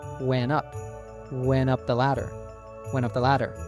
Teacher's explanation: So, the T in went was dropped and it connects to up. · >> Often in English when we have an N and T together, we drop the T sound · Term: connected speech